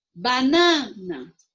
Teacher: o na é a sílaba mais forte